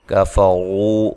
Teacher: را کو موٹا ادا کرنا ہے